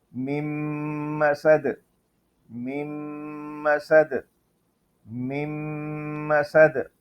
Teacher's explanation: نون کے بعد میم آئے تو پھر پہلے والی میم کو دوسری میم کے ساتھ ملا دیتے ہیں اور نون کی آواز نہیں نکلتی، نون کی آواز بند ہو جاتی ہے.